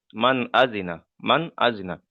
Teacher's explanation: নুন সাকিনের পরে হরুফে হালকির 6টি অক্ষরের মধ্যে থেকে হামজা এসছে, তাই নুন সাকিনকে বিনা গণ্যায় জাহির করে পড়তে হবে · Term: ইজহার